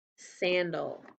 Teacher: we don't really hear that a because it's the schwa sound